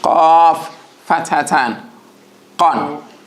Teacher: Both of them in the back of the throat, but that of qaf is slightly behind that of kaf. And also the qaf clicks, and it is a heavy letter. When it has a fatha, it has a heavy sound, an aw sound with it